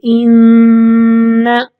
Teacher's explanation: ناک سے آواز نکالنی ہوگی، تھوڑی دیر وہاں پہ رکنا ہوگا۔ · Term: غنہ